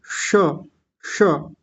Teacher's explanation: जीभ ऊपर जाएगी सबसे ऊपर, और गोल घूम जाएगी थोड़ी सी, और एक अजीब सा उच्चारण आएगा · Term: मूर्धन्य शकार